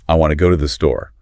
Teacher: So if I say, I want to go to the store, the want and the store get the stress. Right. And the words in between they get rushed and kind of reduced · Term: stress-timed language